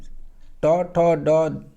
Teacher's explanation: ये मूर्धा से उच्चारण होते हैं, इसलिए इसे मूर्धन्य कहते हैं।